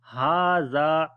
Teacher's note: ha we long due to standing fatha on it